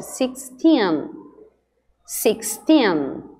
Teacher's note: Lembra que o tin é que é a sílaba forte.